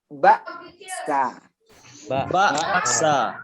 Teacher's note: Huruf hamzah dia pita suaranya tertutup saat sukun